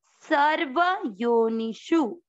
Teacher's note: शु और नी दोनों की मात्रा छोटी है, आपको दोनों को लंबा नहीं खींचना है